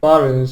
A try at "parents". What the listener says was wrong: Let me look at the word parents, see what you did. That parents, you need to pronounce the P with more aspiration. So be careful of that bilabial consonant there.